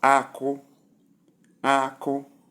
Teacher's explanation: Number 1, we have high, high, which is pronounced as Ako, Ako, nuts, Ako.